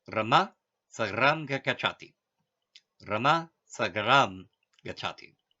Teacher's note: Here we will give one small example of consonant sandhi. When the sound M is followed by a consonant, it becomes the anusvara.